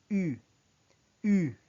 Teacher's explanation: You circle your lips as if you're about to pronounce O, but instead you produce the sound of E, thereby making the U sounds like U, U.